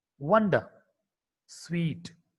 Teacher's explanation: W is a voiced bilabial approximant, which is actually a semi-vowel.